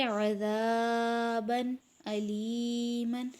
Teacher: دو زبر دو زیر دو پیش کو تنوین کہتے ہیں، جیسے آپ دیکھ سکتے ہیں یہاں عذابن علیمن لکھا ہوا ہے، یہاں با پر تنوین ہے دو زبر کی، اور اس کے بعد حمزہ حروف ہلکی میں سے آ گیا، تو اس میں اظہار کریں گے یعنی غنے کے بغیر پڑھیں گے